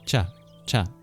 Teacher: So it's like ch but less breathy. Sanskrit tends to be less breathy than our regular English variants. · The c in cham and chanda, this is a palatal plosive